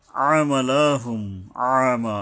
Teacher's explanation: আইন উচ্চারণে সাবধান হতে হবে, মাখরাজের অক্ষর সুনির্দিষ্ট নিয়ম, অর্থাৎ হলকের মাঝখান থেকে গলা চেপে আদায় করতে হবে। আমালা, আমা, মায়ের উপর একালিপ টানতে হবে।